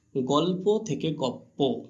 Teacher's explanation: দেখো পরেতে লটা পতে পরিণত হয়েছে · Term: পরাগত সমীভবন